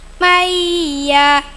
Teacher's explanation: idgham bighunah nun sukun bertemu Ya tekan dengung tiga harakat